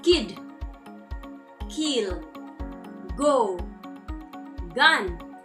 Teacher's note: the body of the tongue approaches or touches the soft palate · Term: velar